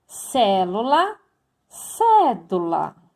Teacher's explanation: Já a esdrúxula, ou proparoxítona, que significa a mesma coisa, a rima vai acontecer na antepenúltima sílaba